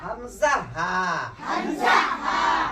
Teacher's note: अकसा-ए हलक। तो उससे भी दो हरूफ अदा होते हैं। और वो दो हरूफ ये है हमजा और हा।